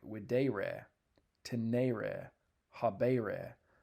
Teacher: Second conjugation verbs, on the other hand, end in a long ERE in the second principal part.